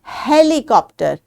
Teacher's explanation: ह करके साउंड है जो कि आपने हलक से निकालनी है।